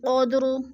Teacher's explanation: لئی پہ یا لین ہے، لیلتی القدر، اور یا لین کو لمبا بھی نہیں کرنا اور جھٹکا بھی نہیں دینا، جیسے لیلتی القدر، قود پہ جو ہے قلقلہ ہو رہا ہے، دا ساکن ہے، دال ساکن کو ہم نے پڑھنے کی صورت میں ہلا کر پڑھنا ہے